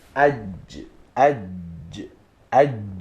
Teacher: For example, when we say aj, aj, aj, jim touches the middle part, touches the opposite hard palate because of its quality of shadda.